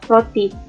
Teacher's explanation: 21. R dengan bunyi getar apikodental atau apikoalveolar bersuara